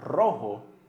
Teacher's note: an R at the beginning of the word, like the word rojo, it rolls